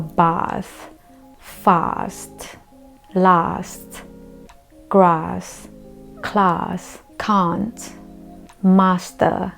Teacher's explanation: in British English or in rpe a is pronounced like a very long a like ah